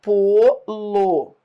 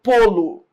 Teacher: o pô é tônico, o lo é átono